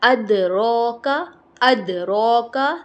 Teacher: دال کو ہلانا ہے کیونکہ دال قلقلہ لیٹرز میں سے ہے، دال کو ہم ہلائیں گے، اوکے؟